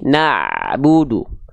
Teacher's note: berarti tawasud enggak betul-betul ngalir tapi enggak boleh tertahan atau terputus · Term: tawassut